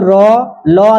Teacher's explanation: জীবের আগাটা যদি দন্তে হালকা স্পর্শ করে সেটা দন্তমূলীয় ব্যঞ্জন ধ্বনি